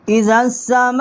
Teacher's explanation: اذا السماء، زال کو ہم نے سین کے ساتھ مشدد کیا. میم الف ما، بڑی مد ہے، 4 سے 5 الف جتنا اس کی آواز جو ہے یہاں بلند کی ہے